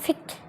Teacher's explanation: প, ফ এবং প এর মাঝামাঝি একটা উচ্চারণ, এখানে পুরো ফও না আবার পুরো পও না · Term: অ্যাসপিরেটেড